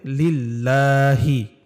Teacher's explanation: আল্লাহ শব্দের ডানে যদি জের হয় তখন ওই আল্লাহকে বারিক বা লা পাতলা করে পড়তে হয়